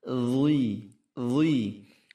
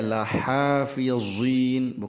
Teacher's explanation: huruf dha ini saudaranya tha, zal, dha, ujung lidah keluar, kemudian halus sekali. Akan tetapi pada huruf dha harus tebal, halus, halus dan tebal.